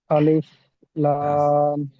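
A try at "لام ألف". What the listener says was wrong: আলিফ লাম নয়, লাম আলিফ, আগে লাম তারপর আলিফ।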